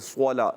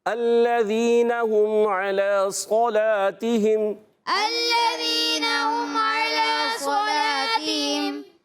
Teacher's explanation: بغیر ہونٹ گول کے آپ نے صوت کو موٹا کرنا ہے۔